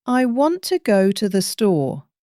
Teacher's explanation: The important words want and store are stressed while the small words are softer. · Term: stress pattern